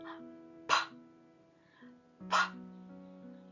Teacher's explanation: ಬಾಯಿ ಮುಚ್ಚಿಬಿಟ್ಟು ಗಾಳಿಯನ್ನು ಹೊರಗೆ ದಬ್ತೀವಿ, ಆಗ ಬಾಯಿ ತೆಕ್ಕೊಂಡಾಗ ಪಾಪಿಂಗ್ ಸೌಂಡ್ ಬರುತ್ತಲ್ಲ, ಅದು ಪಿ ಸೌಂಡು.